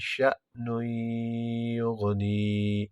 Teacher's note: شأن یغنی میں یہاں ادغام مع الغنہ ہے، نون تنوین کے بعد حروف یرملون میں سے یہ آ گیا